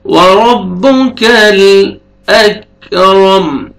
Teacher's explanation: کاف لائٹ سے ساؤنڈ آئے گا، قلقلہ نہیں کرنا